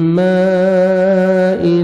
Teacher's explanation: میم آگے مد واجب ہے, دیکھیں اسی کلمہ میں حمزہ آ رہا ہے, 3 سے 4 سیکنڈ ایکسٹرا آپ نے کھینچنا ہے